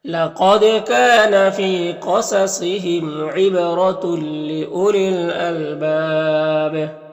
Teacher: با میں الف مدہ ہے اور یہاں پر وقف کریں گے تو مد عارض وقفی ہوگا، اور با میں قلقلہ بھی ہوگا